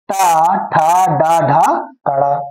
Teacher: टू वर्ग, टाठा, डाढ़ा, अड़ा, रा और सा, इन लोगों का उच्चारण स्थान मूर्धा होता है